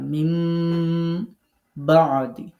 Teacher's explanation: নুন সাকিনের পরে বা আসছে এখন আমরা নুন সাকিনকে মিম দ্বারা পরিবর্তন করে পড়বো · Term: নুন সাকিনের ইকলাব